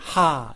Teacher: 히읗이 목구멍 안에서 발음을 만들기 때문에 하 이렇게 발음이 만들어지죠. 그래서 그 앞뒤에 있는 기역, 디귿, 지읒, 비읍이 히읗과 연결되어서 입에서 바람을 강하게 만드는 발음입니다.